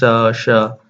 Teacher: तो ऊष्म व्यंजन में क्या होता है, जब हम उस चीज का उच्चारण करते हैं तो थोड़ी सी सांस जो है वो गर्म होती है और एक सीटी सी आवाज आती है